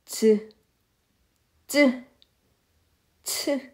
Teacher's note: 완전히 막았다가 서서히 마찰시켜서내는 소리다. 자, 완전히 막았다가 완전히 막았다가 터지는데 완전히 막았다가 터지는데 이것을 요만큼만 여는 거예요.